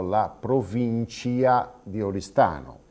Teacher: in sardo si dice per l'appunto provincia con uno iatto, e allora anche nel parlare italiano rendiamo questo iatto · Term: iattizzazione